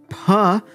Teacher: is unvoiced but you do have the aspiration you do have that puff of air